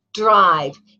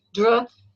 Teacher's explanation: even though they're said quickly and it sounds like one sound, dr, you hear the d and the r sound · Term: consonant blends